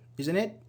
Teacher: It's like falling because you don't need a response here.